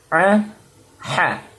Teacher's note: jadi A dan ha itu letaknya di kerongkongan di tenggorokan bagian tengah